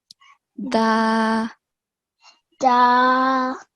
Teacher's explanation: to make the sound of dal, the tip of the tongue is touching the edge of the upper front two teeth.